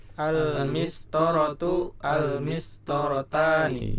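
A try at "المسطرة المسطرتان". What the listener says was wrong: Iya, ya. Ya, lanjut.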